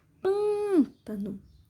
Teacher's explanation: Sílaba mais forte é o pã, som fechado, acento circunflexo.